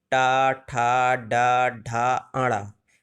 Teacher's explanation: जब हम टा वर्ग का उच्चारण करेंगे दोस्तों, टा, ठा, डा, ढा, आड़ा, तो हमारी जो जिह्वा है वो कंठ की ओर हल्का सा मुड़ जाती है और ऊपर तालु को टच करती है, जो स्थान मूर्धा कहलाता है, इसलिए इसका उच्चारण स्थान क्या होगा? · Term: मूर्धन्य